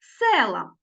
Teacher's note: звук е уже наголошений І ми його чуємо чітко